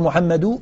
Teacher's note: اولا برفع الكلمه ثم بعد ذلك تاتي بالنون تقول محمد لاحظ ضمه ثم تاتي بنون ساكنه هي التنوين بعد الضمه